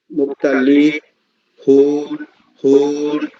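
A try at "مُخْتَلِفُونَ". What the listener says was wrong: হুন না, হুন বলেন নাকি? হ্যাঁ তাহলে ফুন আর একটু টাইনেন।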